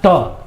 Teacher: जीभ जो है घूम के ऊपर तालु में टक्कर मार रहा है